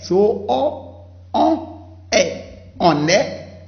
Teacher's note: So you say quand on, not quand on. And then between the on and the e, also liaison.